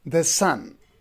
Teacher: So it is iambic metrical feet. So the first foot, the sun, unstressed and stressed, the sun.